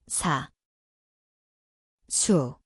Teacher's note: Ia berbunyi seperti S, tempatnya adalah gusi, mendesis. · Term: 시옷